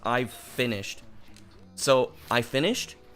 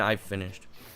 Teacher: you can hear the double length consonant. So you can tell that there's two words.